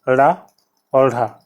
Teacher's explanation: उत्क्षिप्त व्यंजन जो दोनों हैं रा और ढा, ये भी जो है घोष में आते हैं